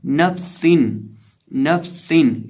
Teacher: सीन में हम सिटी की आवाज़ पैदा करके पढ़ेंगे · निचले होंठ का वस्त्र जब सामने वाले ऊपर के 2 दांतों के किनारे से लगता है तो फा अदा होता है